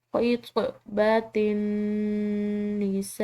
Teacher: یہاں پر نون مشدد ہے، مشدد نون پر غنہ کیا جاتا ہے ، تو یہاں پر ہم غنہ کریں گے، خطبۃ النساء، سین